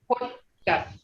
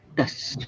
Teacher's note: the first T sound is on top of your palate, on the tongue, is on top of your palate.